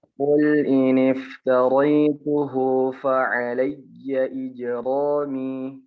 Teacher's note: mengucapkan huruf jim tidak perlu dipotong ketika qalqalah